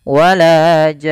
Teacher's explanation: Ya, dia diakhirkan dengan nun yang berharokat tasydid. Ada ditahan. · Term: gunnahnya